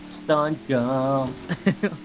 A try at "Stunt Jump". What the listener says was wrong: Did you say Stunt Gump? It sounded like you had a guh in it.